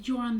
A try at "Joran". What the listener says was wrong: Yoran. As a quick tip, they pronounce it Yoran. I think you said Joran. Joran. It's Yoran. Because German.